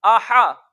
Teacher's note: हमजा पर भी जबर है, मुंह खोल के पढ़ेंगे और इसको लंबा करके नहीं पढ़ेंगे